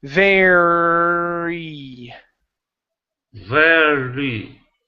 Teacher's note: word to overcome the r in VAR you have to practice stopping on the r holding the r for a little bit then moving on to the the e sound afterwards